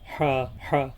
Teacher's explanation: बड़ी हा है इसे छोटी वाली हा से अलग पढ़ना है यह हल्क के दरमियान वाले हिस्से से अदा होती है